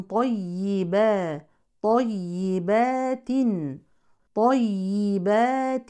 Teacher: الطاء من حروف التفخيم الياء مشدده بالكسر يعني فيها نبر وطبعا هي مرققه والباء والتاء كذلك